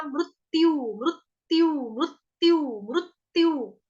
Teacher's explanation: तो दो आधे आधे त बोल रही हूँ